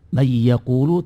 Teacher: tahu bedanya itu yang dimaksudkan tidak ada dengungan itu sama sekali tidak ada suara hidung waktu mengucapkan ya tasydid